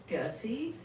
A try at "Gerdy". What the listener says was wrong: It's not Gertie. It's Gerdy. You have to pronounce the D like a Texan. Like Gertie. You're not saying it right.